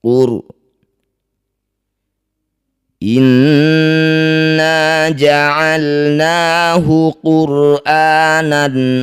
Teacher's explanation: inna nun bertasydid disebut bacaan gunah musyaddadah cara bacanya bunyi nun dengungkan dua harakat inna ja'alnahu quranan ro sukun didahului dumah ini harus dibaca dengan tafkhim atau tebal angkat ujung lidah sampai menempel di langit-langit mulut getarkan ujung lidahnya sedikit saja